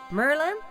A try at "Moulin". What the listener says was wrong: No, Merlin. Merlin. There's an O in there.